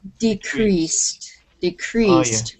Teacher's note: if you are using a verb the stress is on the second uh syllable